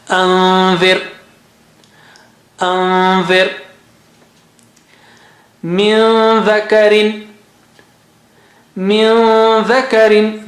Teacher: bring the tongue close to the makhraj and then don't let it touch, and take the sound out from the nose and give it double stretch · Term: Nun sakina followed by dal